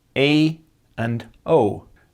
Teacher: In the Netherlands, double E and double O can be pronounced as diphthongs, E and O. In Belgium, they're more likely to be long monophthongs.